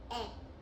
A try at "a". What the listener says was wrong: No, not it. That's E. Ah is A. Ah. Like this.